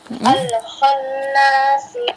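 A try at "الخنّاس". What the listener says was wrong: Hati-hati dialirkan lagi lamnya. Lam sukunnya Ukhti.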